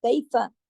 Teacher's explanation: فا کو لمبا نہیں کھینچنا ورنہ الف لگ جائے گا